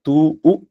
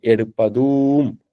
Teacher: அந்த தூன்றது மூன்று மாத்திரை கால அளவு நீட்டிக்கணும்